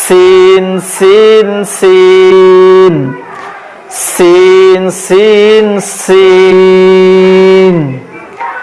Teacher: আর এই সিন শব্দটির আওয়াজ হবে চিকন পাতলা, খর আওয়াজ হবে।